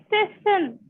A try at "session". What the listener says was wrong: Session. Very good.